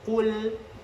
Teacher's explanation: Jadi qu ditambah ada huruf lam. Huruf lam di sini tipis, jangan sampai terikut tebal huruf qaf. Jadi qul, nah seperti itu.